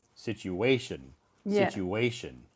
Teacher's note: You have to pronounce the W sound, even though there's no W in the word, but the pronunciation sounds like a W.